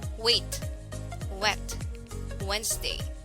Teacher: formed by constricting the entire mouth and pursing the lips into a narrow gap while the vocal cords are vibrated. It is transcribed in IPA as small w. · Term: voice speech sound